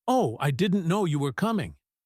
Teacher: Think about the pitch. It was high, it was fast, it sounded energetic.